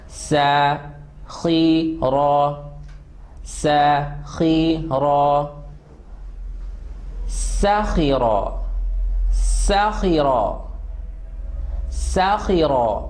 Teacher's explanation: first letter very sharp whistling sound letter, second is full mouth and rough